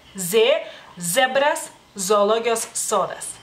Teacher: En México la Z la pronuncian como S, pero en lituano es Z. · Y también podríamos decir que es dental, ya que la vibración ocurre detrás de los dientes, o bueno, cerca de los dientes, digamos así.